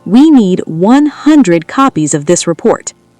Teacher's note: Remember, 100, all the energy is on hun.